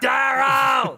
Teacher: I do that vowel, and then I bring my tongue back to get the epiglottis to rattle. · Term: crash out voice